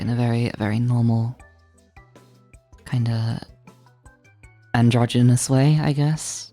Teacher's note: It's got a little bit more crackle to it. It's got it sounds a bit wider, right? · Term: resonance